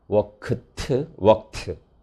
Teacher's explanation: 드가 트로 되는 것은 voicing assimilation이 일어났습니다. 동사가 무성음으로 끝나면 무성음인 트로 맞춰주는 거죠.